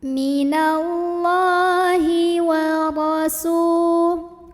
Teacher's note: Ra-nya ini dibunyikan secara tafkhim karena ra-nya berbaris dan kita lihat barisnya itu di atas fathah. maka bacanya ditebalkan dengan cara mengangkat pangkal lidah.